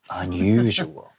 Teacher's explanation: We kind of prolong the second U To make it sound really like unusual